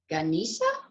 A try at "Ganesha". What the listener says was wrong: Yeah, except the E is a short E, so it's eh, right? So Ganesha.